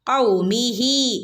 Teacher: ഔമിഹി ഹന് കുറച്ച് നീട്ടി കൊടുക്കുക